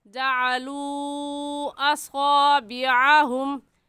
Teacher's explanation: इस वजह से इस मद का नाम होगा मद्दे मुनफसिल और मद्दे जायज़। और इस मद को 3 अलिफ के बराबर खींच कर पढ़ेंगे, ना इससे कम और ना ही इससे ज़्यादा खींचेंगे